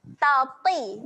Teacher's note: Walaupun to-nya baris bawah, okey, tapi kena bunyikan dengan tebal.